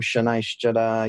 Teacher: Again, if that's too weird, you can use our normal ch sound. It's just that our sound is at the front of the mouth and the Sanskrit's sort of in the middle of the mouth.